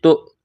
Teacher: تا کو حمزہ کے ساتھ مس کرنا ہے، جھٹکا دینا ہے